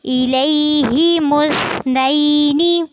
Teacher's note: मुस में सा को और मीम को आपस में मिलाना है, लेकिन ध्यान रखना है कि सा में सीटी की आवाज़ नहीं होती